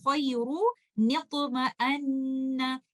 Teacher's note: we will give sakin letter noon a kasra and not a dhamma because there is dhammatain